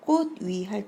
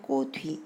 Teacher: 그런데 꽃 위 할 때는 꽃 위 이렇게 음절 끝에 디귿 받침으로 소리가 바뀐 다음에 연음되어서 발음되는 겁니다. 위라고 하는 단어의 의미가 있는 실제 형태소이기 때문입니다.